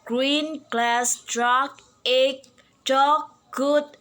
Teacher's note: G is voice. G is articulated exactly the same way as that of K. G is voice velar stop.